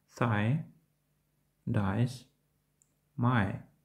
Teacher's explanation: Звук «i». Вимова цього дифтонгу починається з голосного звуку «a», що переходить у голосний звук «і». Звучить подібно до «I».